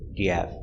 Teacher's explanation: H in have is almost silent.